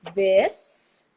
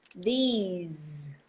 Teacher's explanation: you have to make the long E in order to make the Z.